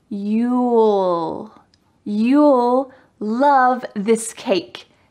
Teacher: Make sure you have a clear L. Your tongue is between your teeth.